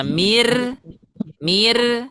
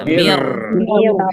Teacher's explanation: sekarang kita bacanya tebal. Kita angkat pangkal lidahnya.